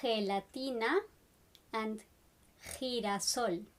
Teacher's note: When the G is next to an I or an E, it has a more throaty sound